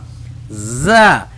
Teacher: زا اس کی آواز باریک ہے اور زبان اندر رکھ کے پڑھیں گے